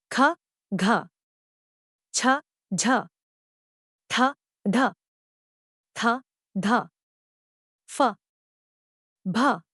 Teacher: वर्ग में आते हैं महाप्राण यह अल्पप्राण व्यंजनों के विपरीत है महाप्राण व्यंजनों के उच्चारण में मुख से वायु ज्यादा मात्रा में निकलती है यानी इनके उच्चारण में श्वास बल अधिक होता है या यूं · उच्चारण में मुख से वायु ज्यादा मात्रा में निकलती है यानी इनके उच्चारण में श्वास बल अधिक होता है या यूं कहे कि हवा का आधिक्य होता है महाप्राण व्यंजनों